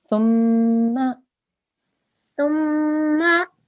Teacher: You need to hold on the meme for 2 seconds. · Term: meme gunna